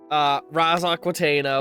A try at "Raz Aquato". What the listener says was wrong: you keep adding syllables to Raz's name. Aquato.